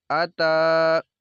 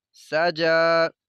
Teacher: کھڑا زبر والے حرف کو لمبا کرنا ہے ہم نے ایک الف کے برابر